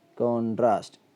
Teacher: നൗണായിട്ട് ഉപയോഗിക്കുമ്പം കോൺട്രാസ്റ്റ്, കോ എന്നതിനാണ് stress വരിക